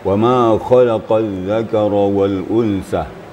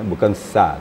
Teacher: ujung lidah dengan gigi atas, tapi tidak menyentuh gigi bawah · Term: huruf zal